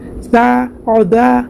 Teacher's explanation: دال میں الف مدہ ہے، الف سے پہلے دال کے اوپر زبر ہے، ایک الف کی مقدار کھینچ کر معروف پڑھیں گے